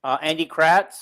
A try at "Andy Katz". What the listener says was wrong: Katz. No R.